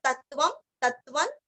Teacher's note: तत्वम त के ऊपर आघात तत्वम तत्वन तत्व वापस तत्व, यहाँ पे भी त के ऊपर आघात है।